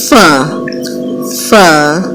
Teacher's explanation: اوپر کے دو دانت نیچے کے ہونٹ کے تر والے حصے پر لگے تو فا فا فا ادا ہوتا ہے